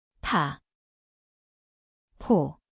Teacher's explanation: 치읓, Kõlab nagu tse, see on aspiratsiooniline, tugeva õhupuhanguga.